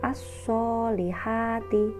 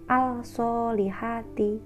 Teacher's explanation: Lafadz ini dibaca as-solihati, bukan al-solihati. Jadi melebur antara alif lam dengan huruf shod. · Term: idgham samsiyah